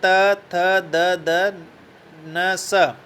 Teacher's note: दंत्य व्यंजनों के उच्चारण में भी जीभ की नोक ऊपरी दंत पंक्ति को स्पर्श करती है।